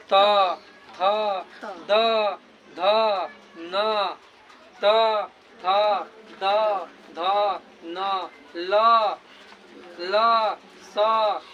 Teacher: आपका जिह्वा जो है वो जा करके दांत से सटेगा। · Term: दंत्य वर्ण